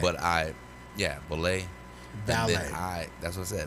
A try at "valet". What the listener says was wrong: Your emphasis on the V are triggering me. It's valet. No, you're va. I'm saying va, and you're at that, and it's va.